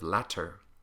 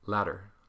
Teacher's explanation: You'll sometimes hear, instead of latter, you'll hear ladder. And so the T's actually turn into an R flap.